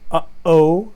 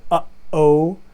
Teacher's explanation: the sound of the throat opening and closing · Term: glottal stop